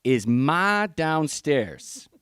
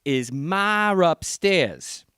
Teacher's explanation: If you have two vowels, you're not allowed to delete that R. In fact, you even put one in sometimes. · So you have to resolve the hiatus by putting an R in. · So you have to put that R in there to resolve what linguists call hiatus. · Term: intrusive R